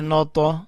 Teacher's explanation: طا کو اٹھایا، طا کے اوپر کلکلا کیا